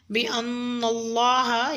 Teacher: یا علم بِأَنَّ اللَّهَ میں نون مشدد ہے، آپ نے غنہ کرنا ہے۔ لام جلالہ سے پہلے نون پر زبر آ رہا ہے تو آپ نے لام جلالہ کو پر یعنی کہ موٹا پڑھنا ہے